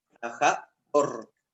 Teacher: Ustedes ya saben que la sílaba tónica es dor.